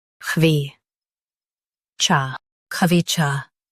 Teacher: Stress cha and keep kha light.